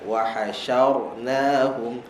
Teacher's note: Shin nipis, ra tebal.